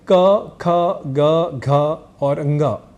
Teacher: क ख ग घ और ंग यह अक्षर होते हैं और यहां अल्पप्राण है क ग और ंग ये तीन अक्षर और यही ख और घ ये दो अक्षर महाप्राण इस नाम से जाने जाते हैं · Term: अल्पप्राण और महाप्राण